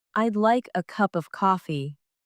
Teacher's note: The stress falls on like cup and coffee.